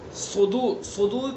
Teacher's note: صدور کے صاد کو پر پڑھیں گے چونکہ حروف مستعلیہ میں سے ہیں